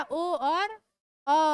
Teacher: कंठोष्ठम। कंठो यानी कंठ भी और ओठ भी।